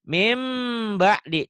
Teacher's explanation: N-nya akan bunyi M, tapi ada bindengnya dan ditahan ya. N-nya akan menjadi M dan ditahan. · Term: iklab